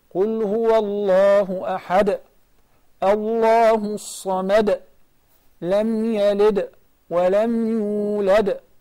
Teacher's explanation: So this is a moderate qalqala. Qalqala letter is the last letter of the word and it is just sakin without shadda.